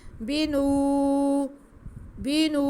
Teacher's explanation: واو ساکن سے پہلے نون پہ پیش ہے تو واو مدہ ہے، نون کے بعد ہم ایک الف کے برابر کھینچیں گے